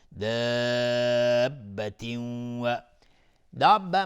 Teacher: مد لازم کلمه مثقل به مقدار 6 حرکت لزوما مد داده میشه